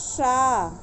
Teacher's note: ये मूर्धन्य सा है, अर्थात वहाँ जीवा ले जाकर बोले जहाँ टा वर्ग को बोल रहे हैं, वहाँ ले जाके इस शा को बोला जाता है।